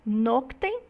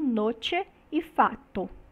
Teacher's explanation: A consoante, o K, né, que é representado pela letra C, sofreu uma assimilação, né, do T, que vem logo depois dele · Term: assimilação regressiva